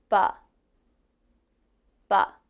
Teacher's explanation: Now you may notice when I say B, my lips are together and a little air comes out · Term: B sound